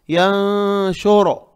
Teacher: پہلے تو نون کو سائلنٹ کریں گے ناک میں